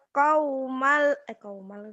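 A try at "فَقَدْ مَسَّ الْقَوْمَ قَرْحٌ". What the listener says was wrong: Kau mak betul. Jangan kau mak kan ada a-nya. Kau mak.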